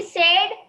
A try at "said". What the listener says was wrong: I noticed that you are dragging this word a bit too long. It's not said. Said.